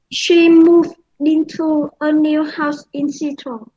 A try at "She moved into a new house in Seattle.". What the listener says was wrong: Thì bạn đã nối âm được thành she moved into. Ok, very good.